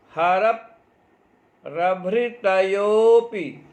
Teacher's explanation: हलंत वर्ण को हम हर के र में स्थित जो अ है उस अ से जोड़कर पढ़ेंगे